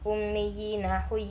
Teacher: yang dinamakan Mad tamkin ialah ya kasrah bertasdid bertemu Ya Sukun panjangnya satu Alif atau dua harakat